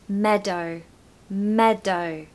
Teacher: Pronunciation tip for meadow, stress the first syllable. So meadow, meadow.